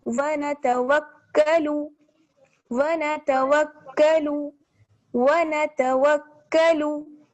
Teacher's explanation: यहाँ पर काफ पर तशदीद है लेकिन यहाँ पर गुन्ना नहीं होगा, गुन्ना सिर्फ मीम और नून पर होता है जब तशदीद हो।